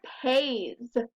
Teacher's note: Pays has the buzzy sound at the end.